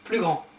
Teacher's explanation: And you don't pronounce the S here.